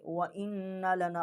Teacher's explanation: यहाँ पर हमने हमज़ा को नून के साथ मुशद्दद किया है, व इन्ना लना, और यहाँ गुन्ना भी किया है।